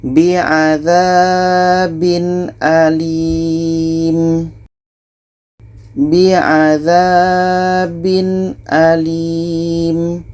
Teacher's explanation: Tanwin jelas, Hamzah jelas, dan tidak ada dengung. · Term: izhar halki